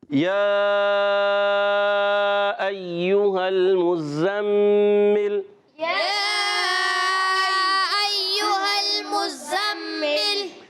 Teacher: میم مشدد ہے، ایک الف کا غنہ بھی کرنا ہے، زا مشدد ہے، رکیں گے مگر میم مشدد پر ایک الف کا غنہ بھی ہوگا۔